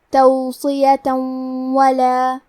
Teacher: یہاں حکم ہے ادغام بغنہ تو ہم یہ حکم کو غنہ اور تشدید کے ساتھ ادا کریں گے